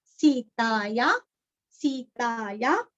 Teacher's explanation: विसर्ग का उच्चारण हल्का सा फ